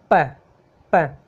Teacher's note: पी जो है वो है बिलेवियल प्लोसिव, बिलेवियल है और प्लोसिव है, यानी कि इसको हम दांत, ये जो नीचे के जो होठ है उसके, ये जो और अपने होठ है ना उनके द्वारा जिसको बोलते हैं ना, वो होते हैं बिलेवियल।